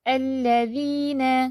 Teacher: لام پہ تشدید ہے، شد ہے، تو اس کو آپ نے زیادہ ہی ہولڈ نہیں کر دینا